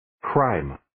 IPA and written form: kraɪm (Crime)